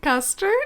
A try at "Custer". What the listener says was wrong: No, Custer. No D.